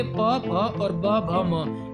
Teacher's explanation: यदि ओष्ठ से आपका स्पर्श हो तो आपके प, फ और ब, भ, म इस प्रकार से आपके व्यंजन बनते हैं।